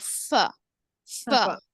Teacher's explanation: फ जो है ना दांत और जो नीचे के होठ से अदा होगा यानी जबान दांत के जो दो दांत है उसका हिस्सा नीचे